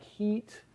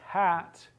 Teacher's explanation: we talk about the high vowel like heat and the low vowel like hat